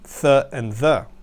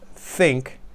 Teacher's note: they're similar to S and Z the very common letters but instead of being made behind the front teeth they're actually made on the front teeth or even between the front teeth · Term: Dental sounds